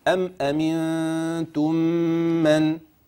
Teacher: الميم يتلوها الميم مباشره ويسمى هذا ادغام تماثل صغير حكمه وجوب الادغام لكل القراء